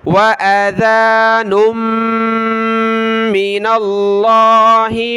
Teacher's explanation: نون کو میم کے ساتھ ملائیں گے